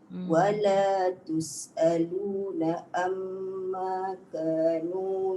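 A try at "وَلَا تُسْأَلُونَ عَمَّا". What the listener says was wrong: tus'aluna amma. Dia tak masuk ain bunda. Wala tus'aluna amma.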